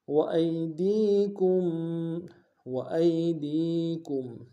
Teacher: وَأَيْدِيكُمْ وَأَيْدِيكُمْ، وائی میں حمزہ کو یا کے سامنے آئیں گے، یا لین بغیر کھینچے پڑیں گے